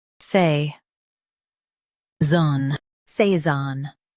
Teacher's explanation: Emphasize zone with a smooth say.